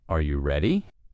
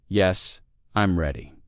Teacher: Questions usually rise in tone. Are you ready? And answers flow downward.